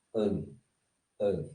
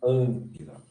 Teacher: São três letras guturais. Sempre que o gama estiver junto com uma letra gutural, como é o caso do gama e do capa, a pronúncia é an, an. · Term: nasalizando